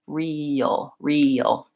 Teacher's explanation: what we really say is before the L we kind of have this schwa this sound so I would add that here like this real real when · But what it doesn't show you in the dictionary is that what we really say is before the L, we kind of have this schwa, this sound.